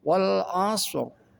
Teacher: Lalu di akhir ayat yang pertama ini ada huruf ra dimatikan dan sebelumnya ada huruf yang berharakat fathah, maka membacanya lebih dibaca tebal. Ra mati lebih dibaca sedikit tebal